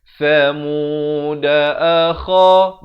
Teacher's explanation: akha di hujung kerongkong